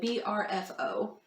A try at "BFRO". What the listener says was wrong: BFRO. You said BRFO. It's BFRO.